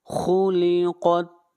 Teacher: خا اور قاف حروف استعلاء میں سے ہیں، دونوں کو موٹا پڑھیں گے